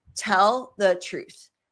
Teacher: Tell and truth are emphasized.